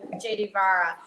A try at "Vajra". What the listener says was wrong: Yeah, so you would say Vi. The J is not actually pronounced the way that we pronounce a J. There's no J in the Italian alphabet. In fact, the Vajra family spells their name with an I. This is the traditional spelling of the name. But if you were to say it in Italian, it's Vi.